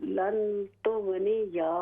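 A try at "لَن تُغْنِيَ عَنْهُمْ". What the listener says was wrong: अन्हुम, या को लंबा न करें।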